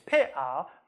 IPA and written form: peʔa (bat)